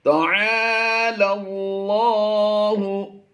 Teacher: لام کو لام سے ملا دیں گے. لام لام زبر لل کی آواز آئے گی